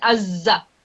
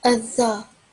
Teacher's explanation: the tip of your tongue is also touching the upper teeth